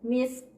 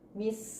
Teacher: k-nya itu tetap terdengar tapi tidak sempurna. Jadi kita menyeret ya, sin sukun dengan ka sukun kita langsung sambungkan, misk. Nah, k-nya masih ingat kan sifat k, kalau dia sukun keluar nafas, jadi tetap ada keluar nafasnya, misk.